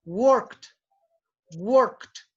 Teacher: La K es una consonante que no tiene vibración. Por ende, el sonido que tú tienes que hacer cuando pronuncias work en el pasado es agregarle una T al final.